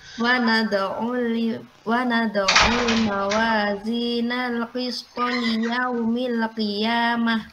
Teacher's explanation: huruf tak marbuto kalau diwakafkan berubah jadi huruf hak ya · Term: hak sakinah indal waqaf